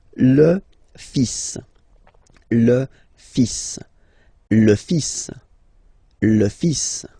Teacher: So it's le, and then even if you've got this L, well, basically you don't pronounce it, and then strangely you pronounce the final S